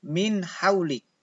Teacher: Nunnya jelas, tidak sama dengan idgham. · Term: izhar khalqi